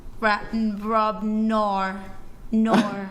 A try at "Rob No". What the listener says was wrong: Well, okay, you hyper-emphasize the R there. Nor.